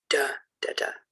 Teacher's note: A dactylic rhythm goes da, da, da. So stressed, unstressed, unstressed.